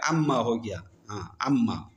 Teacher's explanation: ہے وہ منفصل میں تبدیل ہو گیا، انتا پڑا ہے، پھر ان ما میں نون اور میم قریب المخرج ہے، نون کو میم میں تبدیل کیا، میم میں ادغام کیا ، اما ہو گیا، اما، تو یہ ان ہے، ان، اس